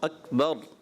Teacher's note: اکبر آخر میں را کو پر کرنا ہے